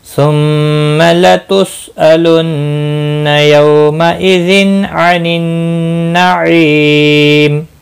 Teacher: نہیں، الن نون مشدد پر بھی گنہ ہوگا، یو واولین ہے، مئذن تنوین کے بعد عین آیا ہے، اظہار ہلکی ہوگا، گنہ نہیں کریں گے ، نون مشدد پر گنہ ہوگا، عی یا مدہ ہے، ایک